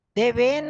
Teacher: पूरा न, अ की आवाज आ रही है ना पीछे